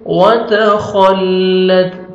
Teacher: خا کو موٹا کر کے پڑھیں گے. وتخلت تا کا لائٹ سے ساؤنڈ آئے گا.